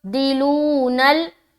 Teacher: अतस्तब्दिलूनल्लज़ी, अतस्तब्दिलूनल्लज़ी, अतस जज्म का कायदा, तब में कलकला करेंगे क्योंकि बाद जो हरूफे कलकला में से है, तो यहाँ पर करेंगे अतस तब तब तब दिलूनल, दी को हम मारूफ पढ़ेंगे जेर की हरकत के साथ